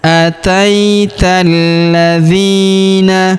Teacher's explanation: kita tahan dan tekan pada huruf lamnya ya karena berharakat tasydid. Ataital alifnya tidak dibaca alif lam syamsiyah ya.